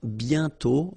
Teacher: You write it, but you don't pronounce it. And then the final T is not pronounced.